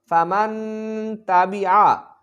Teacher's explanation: نون ساکن کے بعد حروف اخفا میں سے تا آ رہی ہے، تو لہٰذا ہم یہاں غنہ کریں گے، یعنی کہ اخفا کر کے پڑھیں گے۔